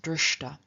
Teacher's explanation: And so, for example, of drsh, to see, we have the ta-participle drshta, where both the sh and the T of the ta have turned into their retroflex equivalents, so sh has become sh and t has become t, and together they're very straightforward to pronounce drshta.